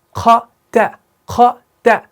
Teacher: خا آپ کا موٹا ہے, تا آپ کا باریک ہے, تو اس کو آپ نے دھیان سے پڑھنا ہے